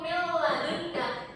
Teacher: Mil ladunka itu cara bacanya langsung dengan tidak mendengung. Mil ladunka, nun sukun ini bertemu lam.